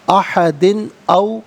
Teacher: احد میں دال کے نیچے دو زے کی تنوین، اس کے بعد حرف علقی حمزہ تو یہاں بھی تنوین کو اظہار کے ساتھ پڑھیں گے